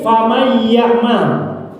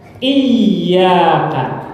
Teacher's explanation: Karena ada nun mati sebelumnya. Berarti ya tasdid di Az-Zalzalah bunyinya harus lebih lama dari ya tasdid pada surat Fatihah. Jangan sampai disamakan.